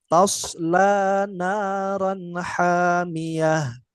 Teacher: Huruf sodnya ditebalkan ya, Nak.